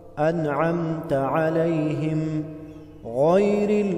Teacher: غین حروف مستعلیہ ہے، موٹا کر کے پڑھیں گے